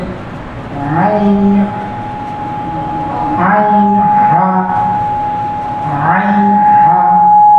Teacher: 2 নম্বর মাখরাজ হলকের মধ্যভাগ হইতে